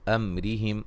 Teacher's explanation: امرہم میم ساکن کا اظہار ہے، را کو باریک پڑھیں گے